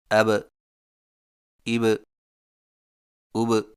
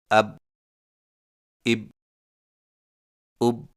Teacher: حرف با پر جزم آئے تو دونوں ہونٹ آپس میں مل کر الگ ہو جاتے ہیں اور قلقلہ ہوتا ہے